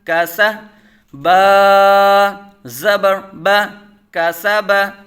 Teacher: تینوں حروف باریک پڑھے جائیں گے